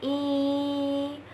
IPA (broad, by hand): iː